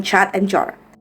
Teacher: Affricates sounds produced by combining two manners of articulation, namely a stop followed by a fricative. Even though affricates involve two different processes, they function as a single sound because they are produced by one articulatory movement.